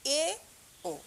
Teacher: জিভ নিম্ন স্বরধ্বনির তুলনায় উপরে এবং উচ্চ স্বরধ্বনির তুলনায় নিচে থাকে। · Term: উচ্চ মধ্য স্বরধ্বনি